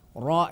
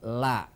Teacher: kalau ro punya sifat getar kalau lam tidak punya sifat getar Adapun makhrajnya sama artinya berdekatan makhroj Anta antara lam dengan ro